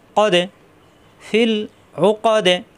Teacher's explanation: দালে সাকিন কলকলা হয়ে যাবে